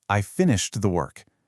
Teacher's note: My voice goes down at the end. That falling melody signals that it's a fact.